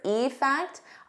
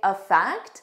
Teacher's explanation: when I say the individual word, effect, I stress that E more, but in a natural sentence, I would just say effect.